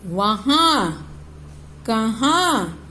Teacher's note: अनुनासिक अर्थात चंद्र बिंदु, वहां, कहां। अनुनासिक का जब हम उच्चारण कर रहे हैं तो हवा किस किस भाग को स्पर्श कर रही है? नाक और मुंह दोनों को।